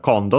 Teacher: In this case, accent on the first syllable. And yeah, kondo, so high, low, low.